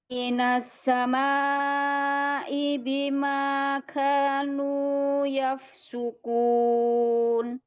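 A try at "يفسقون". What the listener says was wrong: Qaf bukan kaf, bukan yafsukun, tapi yafsukun. Yafsukun bukan yaf enggak, yafsukun.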